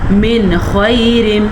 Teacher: میں نے بالکل یہاں پہ غنّہ نہیں کیا، حروف حلقی کی وجہ سے یہاں پہ غنّہ ہو ہی نہیں رہا